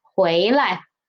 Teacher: 回 second tone and 来 is actually a neutral tone in this word